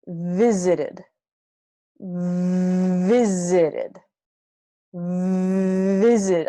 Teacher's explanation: my top teeth and my bottom lip come together